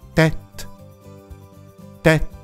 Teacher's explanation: 小さいうの音、若いのジュン、ジュンは口の開きが大きいうの音。というように先ほどまでの単語よりもう少しだけはっきりとした音の違いがありますよね。さあここまで説明すると、じゃあアクソンシフコンフレックスがついている母音はいつも短めでくぐもった音にすればいいのかなとも思いますが、必ずしもそういうわけではありません。先ほどの▁TET▁はもともと▁TEST▁という音が元になっているので、 口をすぼめてくぐもって鳴らすわけではなく、口を丸く開いた▁TET▁TETという音になります